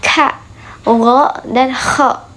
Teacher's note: apabila pangkal lidah bertemu dengan langit-langit lunak terjadilah bunyi